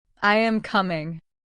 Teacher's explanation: Your voice goes down softly, showing that the sentence is finished.